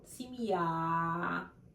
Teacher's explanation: Again, the stress at the end of the word.